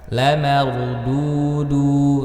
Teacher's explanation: ra dibaca tafkhim karena ra sukun sebelumnya fathah. Dudu sama ya, mad tabi'i waw sukun sebelumnya dhammah.